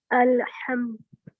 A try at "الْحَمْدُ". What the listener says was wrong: زبان کو ہلنے، جب لام پہ لے آئی نا، زبان ہماری ایکچولی عربی میں جو آگے کے 8 دانت ہے نا اس کے پیچھے لگتی ہے، اردو میں نہیں لگتی. اردو میں ہم مڈل میں کہیں بیچ میں، تو آپ اچھا سا یہاں جمائیں دانتوں کے بالکل پیچھے.